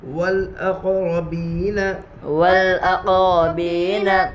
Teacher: حروف قمری کے 14 حروف میں سے حمزہ ہے، اس لیے الف کو نہ پڑھیں گے، صرف لام کو پڑھیں گے